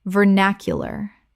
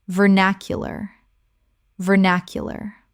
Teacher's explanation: 4 syllables with the stress on the second.